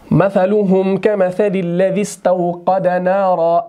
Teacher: इस्तिफ़आल का जो शुरू वाला हमज़ा होता है ये हमज़तुल वस्ल होता है, वस्ल की सूरत में इसको नहीं पढ़ा जाता